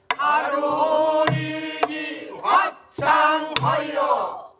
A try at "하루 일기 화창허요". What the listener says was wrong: 그렇게 하면은 그렇게 끝을 놓으면은 개면으로 가서 안 된다니까. 하루 일기 화창허요. 딱 이렇게 떨어뜨려. 그렇지 않으면 그 개면 되니까.